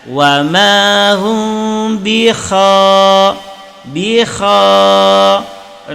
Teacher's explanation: kha makhraj kha berasal daripada al-halqi. Kha al-halqi bagian atas. Jadi ketika kita bi kha, maka kha itu ada getaran.